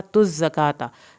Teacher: वयुतुज़्ज़काता, वयु पे झटका लगेगा, तुज़्ज़काता, ता की पे ज़ा के साथ मिलेगी और ज़ा को सख्ती से अदा किया जाएगा, खड़ी ज़बर, और यहाँ पर ता खड़ी ज़बर अदा करनी है, ता की ज़बर को लंबा नहीं करना।